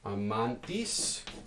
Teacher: in between the last two vowels um example here amantis so this gets penultimate stress if you don't have a consonant cluster here you get anti-penultimate